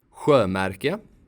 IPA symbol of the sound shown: ɧ